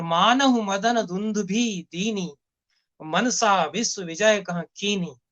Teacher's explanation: इसमें उन्होंने सारे ज्यादातर शब्द जो है वो दीर्घ स्वर वाले, दीर्घ इकार, धुंधुवी में दीर्घ ई है, दीनी में दीर्घ ई है, कीनी में, मनसा में दीर्घ आकार है।